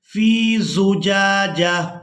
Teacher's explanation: इस एक आंख वाली ता को हमने हा में बदल देना है और साकिन अदा करना है। जीम को इस हा साकिन के साथ मिलाएंगे वक़फ़ की सूरत में।